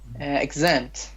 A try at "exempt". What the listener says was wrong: Exempt. it's not A, it's E, short E.